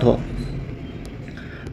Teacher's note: दंती बताना है, वत्स्य बताना है, महाप्राण और घोष व्यंजन वर्ण, दोस्तों ये बनेगा ध।